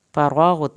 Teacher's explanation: فرغت، را کو پر کر کے پڑھا جائے گا، غائن نہیں ہلانا، تا کی زبر کو بھی نہیں کھینچنا۔